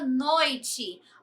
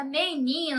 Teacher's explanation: palavras paroxítonas que recebem o acento tônico na penúltima sílaba